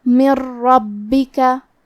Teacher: کلمت من کے آخری میں نون ساکن ہے، پھر حرف الرا ہے کلمت ربکا، را حروف الادغام بغیر غنہ میں سے ہے تو ہم یہ حکم کو بغیر غنہ سے لیکن تشدید کے ساتھ ادا کریں گے، من ربکا۔ کلمت ربکا میں با کی تشدید کو ظاہر کریں گے اور اسے 2 حرف کے برابر پڑھیں گے۔